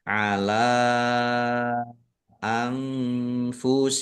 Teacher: menjadi mad jaiz munfasil dibaca panjang boleh lima Boleh dua harakat